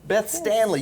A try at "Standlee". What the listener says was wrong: No, we do. Hard D.